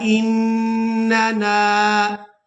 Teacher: پہلے نون مشدد پر غنہ کریں گے اور دوسرے نون کو ہم نے الف مدہ کی وجہ سے کھینچ کر ادا کرنا ہے. اننا سمعنا منادیا، اس طرح سے ادا کریں گے.